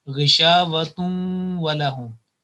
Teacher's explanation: either you find on waw there is a shadda or not, it will be joined with a nasal sound for 2 seconds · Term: idgham bil gunna